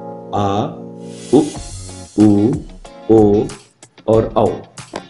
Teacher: इसके बाद आता है पश्च स्वर, जिसके उच्चारण में जीभ का पश्च अर्थात पिछला भाग प्रयोग होता है